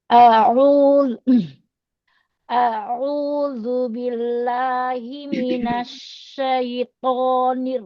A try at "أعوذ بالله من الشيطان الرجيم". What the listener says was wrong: Ainya kok jadi berat banget. Ainya diringankan yuk.